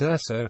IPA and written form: ˈɛsoʊ (Esso)